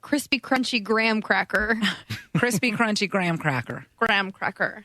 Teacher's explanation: Amy says, I think it's because she uses the back of the tongue to say the CR sound and the GR sounds instead of the front of her tongue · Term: Crispy R's